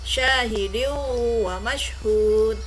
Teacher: Idgham biguna dibaca dengung